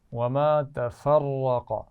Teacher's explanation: را موٹا ہے، قاف بھی موٹا ہے